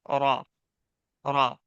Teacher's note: रा का भी वही मखरज है, जबान की नोक, और ये सिर्फ चार दांतों में सटेगी, बल्कि चार दांतों के आसपास ही रहेगी हमारी जबान, यहाँ पे मसूड़े में सटेगी तो रा अदा होगा। रा, रा। और जबान हल्की सी टेढ़ी हो जाती है हमारी जब हम रा पढ़ते हैं तब।